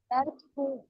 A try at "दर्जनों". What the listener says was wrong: नहीं, दर जीम है वो दर खुनू नहीं होगा, जीम है वो।